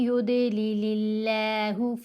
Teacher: लफ्ज़ अल्लाह की लाम को बारीक पढ़ना है क्योंकि इस लाम से पहले ज़ेर आ गई